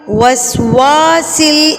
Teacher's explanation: واو کے آگے الف مدہ ہے تو اس کو ایک الف کے برابر ہم اس کو کھینچیں گے، ایک حرف کے برابر ہم اس کو لمبا کریں گے.